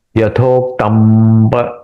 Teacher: यथोक्तम पर प फ ब भ म, ये जो विसर्ग है, ये प वर्ग का अनुनासिक कौन सा है? म है, इसलिए म यहां पे इस अनुस्वार का उच्चारण मैंने म के जैसे किया, यथोक्तम पर लेकिन म ऐसा नहीं किया, ऐसे यथोक्तम पर उसको थोड़ा लेंदी किया और प के साथ मिला लिया।